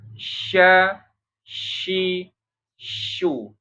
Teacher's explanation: Jadi tafashi itu udara menyebar di rongga mulut. · kalau shin itu tengah lidahnya itu nggak sampai menempel banget ya. Ini kan langit-langit, ini lidah tengahnya nih.